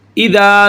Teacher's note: یہ ذال ہے، نرمی کے ساتھ ادا ہوگا، اوپر والے دانتوں کے ساتھ ٹچ ہوگی زبان کی نوک